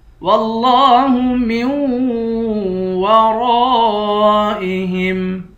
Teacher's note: میم کو واو کے ساتھ ملا کر غنہ کر کے پڑھیں گے۔ ورائہم، را کے بعد الف ہے، الف حروف مدہ ہے، الف پر مد بھی ہے، اس مد کو 5 الف کی مقدار کھینچ کر پڑھیں گے۔ · فی تکذیب واللہ من ورائہم محیط، واللہ، واو کو لفظ اللہ کے لام کے ساتھ ملا کر لفظ اللہ کے لام کو موٹا پڑھیں گے، لام پر کھڑا زبر ہے، اس کو ایک الف کی مقدار کھینچ کر پڑھیں گے۔ میم کو واو کے ساتھ ملائیں گے، میم کو نون سے نہیں ملائیں گے۔